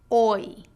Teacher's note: your jaw Rises with the tongue and returns to a neutral position your tongue Glides from a low position to a high position